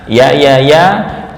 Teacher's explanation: ya yang hidup berharakat itu makhrajnya ada di tengah.